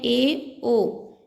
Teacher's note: अर्ध समवृत्त थोड़ा मुख खुला होता है, इसमें आते हैं ए, ओ।